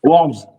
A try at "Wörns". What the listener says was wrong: Ouais, c'est mal prononcé, mais c'est ça. Christian Wörns. O avec tréma, on dit Wörns.